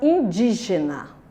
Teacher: E no grupo das proparoxítonas, que a sílaba tônica é a antepenúltima, nós temos a palavra indígena